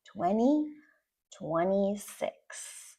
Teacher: We just say the N sound. We delete the T sound.